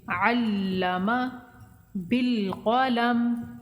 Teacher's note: لام کو مشدد پڑھیں گے رک کر، میم کو بغیر کھینچے